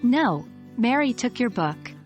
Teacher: the names, Peter and Mary, are stressed as they are the new and most critical information in each sentence